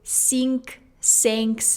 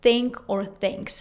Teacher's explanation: For me, at the very beginning, when I just started learning English, this sound was extremely difficult because in my native language, Russian, we don't have this sound. That's why a lot of Russian speakers who try to speak English often say sink, sinks instead of think or thinks